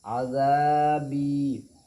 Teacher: जितना ज़ाल अलिफ ज़बर ज़ा को खींच रहे हैं उतना ही बा या ज़ेर बी को ही खींच रहे हैं, दोनों बराबर है।